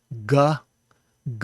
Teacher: you say that by putting your tongue up against the roof of your mouth and then letting the air come out in a plosive manner or if you did it and didn't put your tongue completely